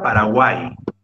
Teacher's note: Paraguay, aunque te sorprenda, mi estimado alumno, es aguda, porque la sílaba más fuerte es guay